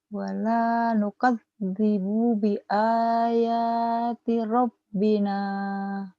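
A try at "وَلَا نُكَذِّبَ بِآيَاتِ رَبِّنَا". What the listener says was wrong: bagus rabbina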